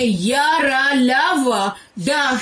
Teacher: अल्पप्राण होता है उच्चारण में हवा की मात्रा कम निकले, प्रत्येक वर्ग का पहला, तीसरा और पांचवा।